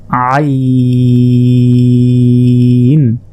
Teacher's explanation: হলকের মধ্যভাগ হতে অর্থাৎ গলার মধ্যভাগ হতে এটি উচ্চারণ হবে